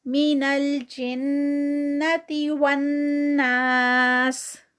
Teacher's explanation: من الجنتی یہاں پر جن میں بھی آگے نون مشدد تو یہاں پر بھی غنہ آئے گا